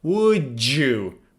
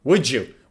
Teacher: When D reaches Y, we usually pronounce it as J.